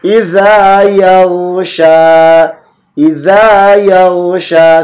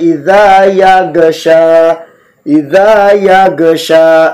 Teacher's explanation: Wallaili idza panjang, idza yausha ya, kemudian di depannya ada ghin sukun. Ghin tidak sama sekali dipantulkan karena bukan huruf qalqalah.